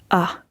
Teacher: So when you have it at the end, often together with an E, right? ER at the end of German words, you would have it more like an ah sound. So you don't really pronounce the R. You can, of course, stress it, but the normal speaker in everyday life would just say ah.